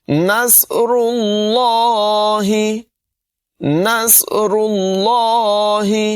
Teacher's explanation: را کی ادائیگی بھی پر ہوگی اور لفظ اللہ کو بھی پر پڑھیں گے